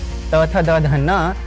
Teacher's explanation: इनके उच्चारण के समय जीभ दांतों से लगती है। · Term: दंतीय